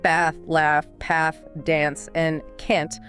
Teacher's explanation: in general American English, words like bath, laugh, path, dance, and can't are almost all pronounced with the short flat a sound. It's the exact same vowel you hear in the word cat or trap.